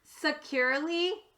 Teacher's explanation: as well the whole word is securely now you'll notice that the letter e here changed from a long e sound to an a sound that's what we call a schwa